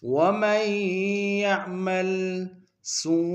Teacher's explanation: سو میں وہ مدہ ہے اور مدہ متصل ہے، کم سے کم 3 مقدار میں کھینچے گے